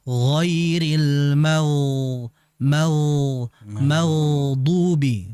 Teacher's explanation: Ya, jadi ghain ketika sakin, ketika ghain ini mati, maka ghain ini kan memiliki sifat yang mengalir, rikhawah, disertai dengan isti'la, ketebalan, maka ditebalkan dengan aliran ghairil maghdubi, bukan mag.